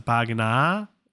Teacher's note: we see a modification of the final vowel here for pagina, so pagina, elongation of the vowel